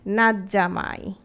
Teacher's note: তটা vanish হয়ে যাবে, জটা ডাবল হবে, নাচ জামাই হবে না, শব্দটা হবে নাচ জামাই।